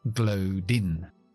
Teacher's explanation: Esa D me lo llevo a la I de in.